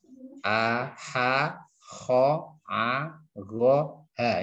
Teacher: Ini hanya untuk memudahkan sebagai gambaran bahwa idhar halqi yaitu nun sukun atau tanwin bertemu dengan salah satu huruf hamzah ha, kha, ain, ghain, ha. Keenam huruf ini dinamakan huruf halak atau huruf tenggorokan. Asalnya itu dari tenggorokan semua.